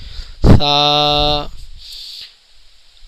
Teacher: ناظرین، سا کے اندر اکثر ناظرین ہمارے سی ٹی کی آواز نکالتے ہیں، یہ صحیح تلفظ نہیں ہے۔ سا کے اندر سی ٹی کی آواز بالکل نہیں آئے گی، آپ کی زبان اوپر کے دانتوں کو ٹچ کرے گی تو اس کے تلفظ صحیح ادا ہوں گے۔